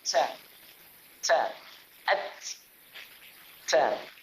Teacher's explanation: Huruf ta dia ada hamas, iaitu bunyi angin.